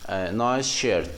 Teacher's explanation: So the S sound will be sha. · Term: palatalization